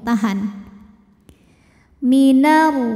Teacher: fatratim kemudian ada hukum idgham bunah karena tanwin menghadapi huruf mim maka tanwin lebur ke mim fatrotim disertai bunyi dengung